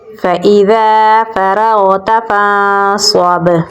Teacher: ذال کو ہم نرم پڑھیں گے، آگے الف مدہ ہے تو اسے ہم ایک الف کے برابر لمبا پڑھیں گے، را · نون ساکن کے بعد حروف اخفا میں سے صاد ہے تو یہاں پر ہم اخفا کریں گے · را کو پر یعنی موٹا پڑھیں گے اور غین کے ساتھ ملائیں گے · پر یعنی موٹا پڑھیں گے اور با کے ساتھ ملائیں گے، با پہ ہم قلقلہ کریں گے، یہاں پر سٹرونگ قلقلہ ہوگا